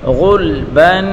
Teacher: غین کو پر پڑھیں گے, غین کو لام کے ساتھ ملا کر پڑھیں گے, اور با کے اوپر دو زبر کی تنوین ہے.